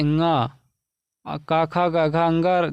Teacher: तो इसका उच्चारण स्थान हो जाएगा नासिक यानी नाक